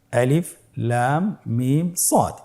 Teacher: এখানে আলিফে কোনো চিহ্ন নেই, লামে মোটা চিহ্নটি রয়েছে, মিমে মোটা চিহ্নটি রয়েছে, সদে মোটা চিহ্নটি রয়েছে। তাহলে আমাদেরকে লামকে 4 আলিফ, মিমকে 4 আলিফ এবং সদকে 4 আলিফ টেনে পড়তে হবে। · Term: মাদ্দুল আজিম হারফি মুতাক্কাল